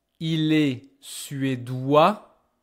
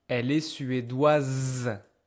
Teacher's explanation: you distinguish them by hearing because thanks to this new E, you can hear the last consonant that you usually cannot hear at the male version